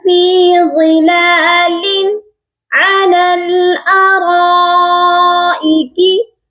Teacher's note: فی ظلال، غا کو موٹا کر کے پڑھیں گے، اور لام کے نیچے جو تنوین ہے اس پر صرف اظہار حلقی کیا جائے گا، کیونکہ آگے عین ہے جو کہ حرف حلقی ہے